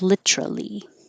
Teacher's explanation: keep the t and make it three syllables